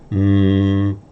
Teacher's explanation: you'll hear the slight puff of breath coming out of the nose. That's why it's called nasals. · Say mouth completely closed. Vocal cords vibrating but the air coming out of the nose only.